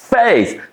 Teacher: You are spending some extra time. You are exaggerating on the letter F